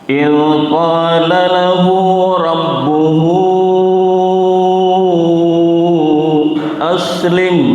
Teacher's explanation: rabbuhu hunya panjang 2 sampai 3 alif karena berjumpa dengan hamzah di lain kata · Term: mad jaiz munfasil